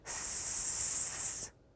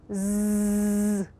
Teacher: The Z sound is the voiced sound of the letter S. We can feel the difference when we make those sounds.